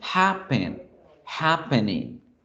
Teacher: Happen. Hacemos la fuerza en ha.